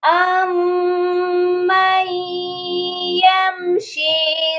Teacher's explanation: سب سے پہلے تو میم مشدد ہے، یہاں پر ہم نے غنہ کرنا ہے